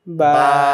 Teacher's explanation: এখানেও কিন্তু দেখো আলিফটা মুখের খালি জায়গা থেকে উচ্চারণ হচ্ছে, এখানে কিন্তু আলিফের উচ্চারণ মূলত হচ্ছে না, বাটাকে আমরা টেনে পড়ছি